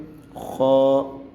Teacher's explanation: خا کو ہم گلے کے سینٹر سے ادا کریں گے۔ خا۔ اور یہ گرین کلر کا لفظ ہے، یہ موٹا کر کے ادا کیا جائے گا۔